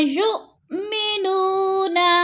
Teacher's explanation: جیسے یؤمنون، نو پہ وہ مدہ ہے، اس کو بھی ہم نے تھوڑا سا لمبا کر کے پڑھنا ہے۔ جیسے الذین یؤمنون بالغیب ویقیمون الصلاۃ، بالغیب ویقیمون الصلاۃ، بالغی کو اکثر لمبا کر جاتے ہیں، بالغیبی، غی کو لمبا نہیں کرنا، یالین ہے، اور یقی جو ہے اس کو لمبا کرنا ہے، یا مدہ ہے، منہ کو بھی لمبا کر کے پڑھنا ہے۔